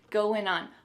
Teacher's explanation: Again, we're gonna drop that G at the end of the word going.